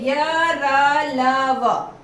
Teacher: य, र, ल, व चारों ही अल्प प्राण हैं, इनको बोलने में कम समय लगता है, हवा कम देनी पड़ती है।